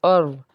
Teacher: हमज़ा जो है सीने की तरफ से इसको अदा करते हैं